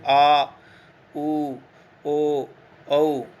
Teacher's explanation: पश्च स्वर, वे स्वर जिनके उच्चारण में जीवा का पश्च भाग अर्थात पिछला भाग कुछ ऊपर उठा हुआ हो वो पश्च स्वर कहलाते हैं, जैसे आ, उ, ओ, औ।